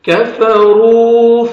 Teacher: الذین کفروا، کاف کو باریک پڑھیں گے، را کو مردمہ ہے، را کو موٹا کر کے پڑھنا ہے ، اور واو مدہ بھی ہے، 1 سیکنڈ را کو کھینچنا